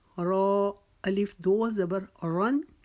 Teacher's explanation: را کے اوپر زبر یا پیش آ جائے وہ را موٹی پڑھی جاتی ہے، را کے نیچے زیر آ جائے وہ را باریک پڑھی جاتی ہے. یہ را کے اوپر دو زبر کی تنوین ہے، اس کو ہم موٹا پڑھیں گے